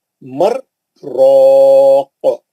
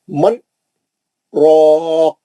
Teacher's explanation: نون ساکن کے بعد راہ ہے، تو یہ جو ہے ادغام بلا غنہ ہوتا